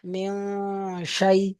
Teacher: নুন সাকিনের আওয়াজকে নাকে তুলে একালি পরিমাণ টান দিয়ে পড়তে হবে, গুণা করে পড়তে হবে, একে ইকফা বলে।